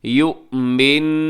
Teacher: یا پیش حمزہ یو جھٹکے کے ساتھ بولیے گا